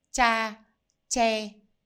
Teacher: For Northern accent, Hanoian accent, they both sound the same, which sounds similar to the CH in English.